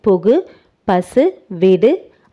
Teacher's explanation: தனிக்குறில் எழுத்தை அடுத்து வரும் வல்லின உகரங்கள் ஒரு மாத்திரை அளவுக்கு முழுமையாக ஒலிக்கும் வல்லினம் அல்லாத உகரங்கள் எப்போதும் முழுமையாகவே ஒலிக்கும் இவ்வாறு ஓசை குறையாமல் ஒரு மாத்திரை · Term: முற்றியல் உகரம்